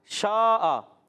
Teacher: مد متصل ہوگی 2-2.5 الف یعنی 4 یا 5 حرکات کھینچ کر ادا کریں گے اور شین کا مخرج ہے زبان کا درمیان تالو کا درمیان